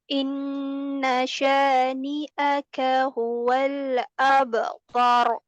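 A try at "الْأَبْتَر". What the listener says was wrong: Abtar. Jadi jangan abtar. Nah, dinaikkan. Naikkan. Bibir bawahnya naik nggak tadi? Tidak. Abtar.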